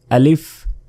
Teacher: এই আলিফ মুখের খালি জায়গা হতে এটি উচ্চারিত হয়